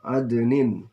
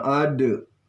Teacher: Ini namanya qalqalah sugra. Bacaannya memantul dengan ringan.